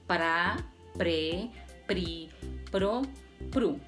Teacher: el fonema P tiene punto de articulación bilabial, es decir, se produce en la unión de los dos labios · el fonema R tiene punto de articulación alveolar, es decir, se produce cuando la punta de la lengua se sitúa en los alvéolos, es decir, una parte situada justo encima de los dientes.